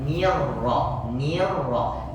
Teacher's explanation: jadi ni tipis kemudian ro Huruf tebal